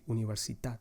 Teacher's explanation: the stressed syllable is the last one that you say